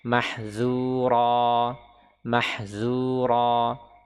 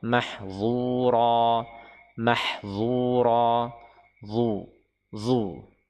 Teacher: huruf dha dia diucapkan dengan itbaq, yaitu apa, terkurungnya suara ya, sehingga tebal